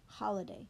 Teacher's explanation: it becomes holiday and the stress changes the vowel becomes short